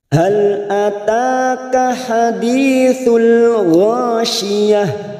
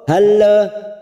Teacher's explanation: Hal yang pertama ada huruf lam sukun. Hati-hati jangan sampai tawalud. Contoh halla, ya, itu tidak boleh, hanya masuk tanpa dipantulkan.